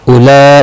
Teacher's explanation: یہاں مد متصل ہے، 4 الف کی مقدار کے برابر کھینچ کر پڑھیں گے